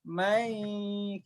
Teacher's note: Ingat, non mati dengan ya itu kan blenderan dua huruf. Jadi dia bukan non sepenuhnya, bukan ya sepenuhnya ya. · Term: idgham nakis bigunnah